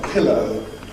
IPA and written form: ˈpɪləʊ (pillow)